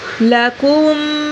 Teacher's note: لکم میم کو لمبا کریں گے اور میم پہ غنہ کریں گے